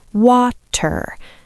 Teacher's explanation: a crisp, clean T sound, like a little click of the tongue behind your teeth.